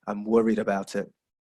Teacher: So you have a falling intonation to show that you're worried about something.